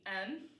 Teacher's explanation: The second one is for words that start in a TH. A lot of the time the TH will just be kind of dropped. So instead of them, it'd be M.